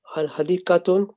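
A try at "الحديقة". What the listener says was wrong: No, when alif lam comes, we don't read the last letter with tanween. We read Mumarrazatu al-hadikatu.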